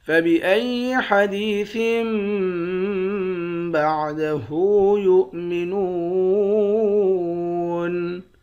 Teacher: ثا کو اس چھوٹے والے میم کے ساتھ ملا کر اقلاب کریں گے، یعنی غنے کے ساتھ پڑھیں گے